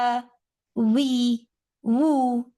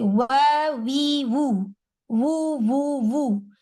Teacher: दोनों lips round हो रहे हैं। वहां से आवाज का आगाज उधर ही से हो रहा है। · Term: वाओ